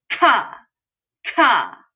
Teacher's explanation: You probably felt a whole lot of air shooting right out of your mouth when you pronounce that totally plosive K